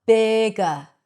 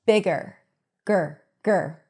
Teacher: in British English, bigger, You're just going to pronounce the schwa.